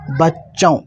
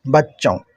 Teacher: थोड़ा नाक में आवाज़ आता है, नून गुन्ना होता है, जिसको हिंदी के अंदर अनुस्वार या चांद बिंदु बोल लें, बच्चों।